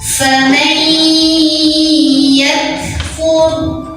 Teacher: Ra sukun dibunyikan secara tafkhim karena huruf sebelumnya yang fa garisnya dhammah, maka wa-nya tebal.